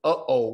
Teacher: what they consider glutam stop or they say or silence so it's not something that you uh say with a lot of pronunciation but it's more of like a breath or a throaty sound